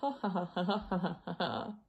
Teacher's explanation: separating notes with what's called the glottal stop which effectively is operating the stream of air by saying ha